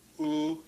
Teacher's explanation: Oo, you have the lips rounded, and the back part of your tongue is raised.